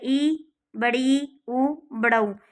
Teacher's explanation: इनके उच्चारण में मुंह बहुत ज़्यादा नहीं खुलता है, अर्थात बंद सा ही दिखाई देता है, कुछ हद तक हमारा मुंह जो है वो बंद हो जाता है। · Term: संवृत स्वर